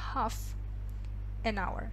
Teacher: буква h читается, но тем не менее l не читается.